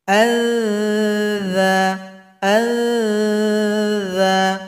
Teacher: huruf dza sama dengan tsa lembut bunyinya ujung lidah dengan ujung gigi